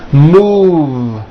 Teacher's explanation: Move has that voiced V sound.